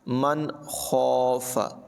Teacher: فإن الجحیم ہی المأویٰ، وَأَمَّا مَنْ خَافَ مَقَامَ رَبِّهِ وَنَهَى النَّفْسَ عَنِ الْهَوَىٰ، وَأَمَّا مَنْ خَافَ، ناظرین کرام دیکھیں یہاں پر نون ساکن میں اظہار ہے، یعنی نون ساکن کو ظاہر کر کے بغیر غننے کے پڑھا، اس لیے کہ اس کے بعد حروف حلقی ہے۔